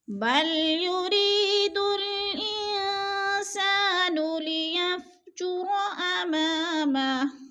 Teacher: انسان، ان پہ اخفا ہے، نون ساکن کے بعد سین حروف اخفا میں سے آ گیا ہے تو ادھر اخفا کریں گے، ناک میں آواز لے جائیں گے. سا پہ الف مدہ ہے، الف مدہ کے الف خالی سے پہلے سین کے اوپر زبر ہے تو الف مدہ، الف مدہ کو ایک الف دو حرکات کے برابر ہم نے کھینچ کر پڑھنا ہے.